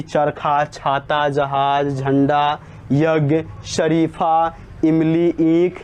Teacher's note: इन सभी शब्दों का उच्चारण स्थान तालु होता है